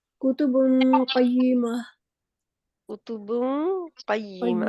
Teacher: इनमें आवाज़ को छुपाना है गुन्ना करके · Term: इख्फ़ा